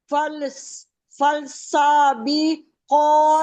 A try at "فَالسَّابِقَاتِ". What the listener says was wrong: فل نہیں ہے، یہ لام کو نہیں پڑھیں گے.